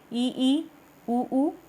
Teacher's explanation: जिसको मुंह ज़्यादा खोल के जो हमें स्वर नहीं बोलने पड़ते, उनको कहते हैं संवृत स्वर।